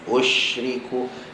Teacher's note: Shin ada hams, maka lepaskan angin dia. Usyriku, dia ada hams dan dia ada tafashi.